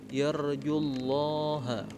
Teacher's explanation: Lam di huruf Allah itu dibaca tebal